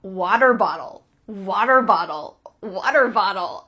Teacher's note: it really is the perfect example of an american accent it uses the t changing to a d